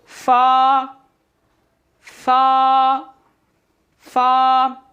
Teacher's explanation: फ़ा जो है ऊपर के दांतों के किनारे और निचले होंठ के तर हिस्से से अदा होगा